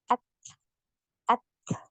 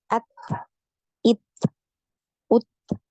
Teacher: huruf Ta ini tertahan dulu suaranya tertahan dulu ya baru kemudian ngalir nafasnya at ya seperti itu ya jadi jangan dibunyikan ya nafasnya jangan